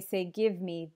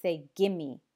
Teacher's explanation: often when we say give me the V sound disappears and we just say gimme which sounds like just one one strange new word gimme so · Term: reduction